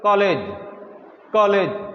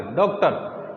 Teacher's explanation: ना तो ओ की ध्वनि आएगी ना पूरी आ की आएगी, बीच की ध्वनि आएगी